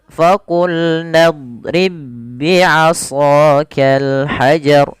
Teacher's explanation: ba bertemu dengan ba makhraj dan sifatnya sama maka ba yang pertama masuk kepada ba yang kedua dan diidgamkan. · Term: idgam mutamilain